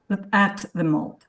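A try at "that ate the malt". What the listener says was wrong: Yeah. You're losing the t.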